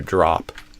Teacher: So instead of uh I would do ah a more open sound like the ah in father